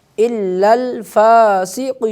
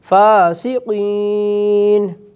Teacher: فا کے اوپر کھڑی زبر ہے اسے تھوڑا کھینچنا ہے